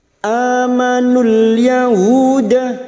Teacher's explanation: hu dhamma diikuti wawu sukun 2 harokat mad tabi'i